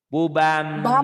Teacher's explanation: Cuman nun mati ketemu ba jadi ada M-nya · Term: iklab